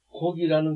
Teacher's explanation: 앞에 나오는 기억 소리는 울리지 않고 뒤에 나오는 기억 소리는 울린다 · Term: 울림 소리